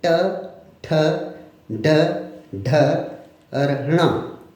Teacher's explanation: इनका उच्चारण करते समय मूर्धा से जीभ को लगाया जाता है · ट वर्ग में जीभ को थोड़ा सा पीछे की तरफ घुमा के फिर जो ध्वनि कंठ से निकल रही है उस पर वो ध्वनि आती है, वो है ट। जीभ उल्टी की पीछे की तरफ, फिर ध्वनि निकालिए ट, ठ, ड, ढ और ण। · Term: मूर्धन्य ट वर्ग